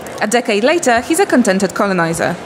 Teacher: You did the little peak and trough intonation even without the comma.